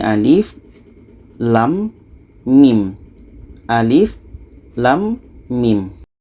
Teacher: ini harus dibaca satu-satu ini alif lam mim alif lam mim alif ini pendek saja lam enam harakat mim enam harakat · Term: fawatihus suwar